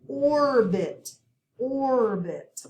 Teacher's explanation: we have two syllables and we have a short i sound and we accent the first syllable